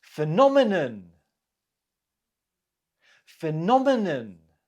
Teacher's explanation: the stress is on the second syllable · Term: word stress